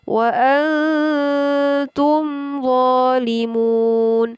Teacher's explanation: Di sini mim mati bertemu dengan huruf dha. Dibaca dengan izhar atau dengan jelas. Jelas mim matinya. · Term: idhar syafawi